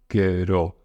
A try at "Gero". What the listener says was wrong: Yeah, don't roll it that much.